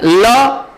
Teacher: जब हम ल को बोलते हैं तो जिह्वा ऊपर देरी तक रुकती है, ल, और उसके बाद वायु जो है जिह्वा के दोनों पास से निकलती है, इसलिए इसका नाम पार्श्विक व्यंजन पड़ा ना।